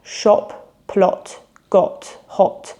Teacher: you really want to be rounding the lips, and it's more of an O sound, like in words such as shop or plot. And the key is to keep this O sound really short and distinct and punchy. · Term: short O sound